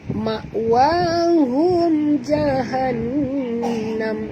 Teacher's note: Dia dekat nun ada tasydid, jadi kita kena dengung ya.